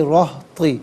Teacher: रा पर ज़बर या पेश हो तो रा को पुर पढ़ते हैं, ज़ेर हो तो बारीक पढ़ते हैं, यहाँ पुर करके पढ़ा जाएगा।